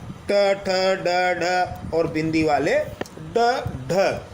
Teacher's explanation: इन व्यंजनों के उच्चारण में हमारी जीभ जो ऊपर वाले जबड़े का शीर्ष स्थान है जिसे हम मूर्धा कहते हैं उसे स्पर्श करती है और जीभ वापस झटके से बाहर आती है। इसे उच्छित व्यंजन कहते हैं यानी जीभ झटके से वापस आती है यानी उछलती हुई आती है।